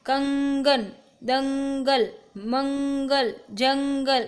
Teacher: अनुस्वार में अपन नाक से उच्चारण करते हैं